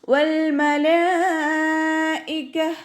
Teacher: ലാമിൻ്റെ കൂടെ മദ് വന്നു. മദ്ദക്ഷരത്തിന് ശേഷം അതേ വേർഡിൽ തന്നെയാണ് ഹംസ വന്നിട്ടുള്ളത്. മദ് വാജിബ് മുത്തസിലാണ്. 4ഓ 5ഓ കൗണ്ട് നിർബന്ധമായിട്ടും നീട്ടിക്കൊടുക്കണം. കാഫ് കുറച്ചൊന്ന് ചെരിച്ചിട്ട് ഉച്ചരിക്കാൻ ശ്രദ്ധിക്കുക കേട്ടോ.